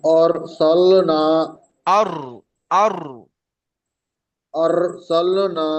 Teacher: আলিফ মাদ্দাকে এক আলিফ পরিমাণ টান দিয়ে পড়তে হয়।